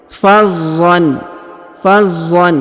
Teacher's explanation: huruf za berharokat tasdid ditahan, kemudian dibaca jelas huruf an-nya atau tanwinnya ya.